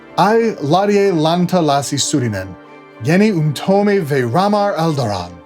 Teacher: Tolkien wrote this as trochaic verse, I think, stress on the first syllable of each kind of metrical foot.